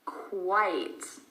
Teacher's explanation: Notice that we have a W sound even though there is no W in the spelling.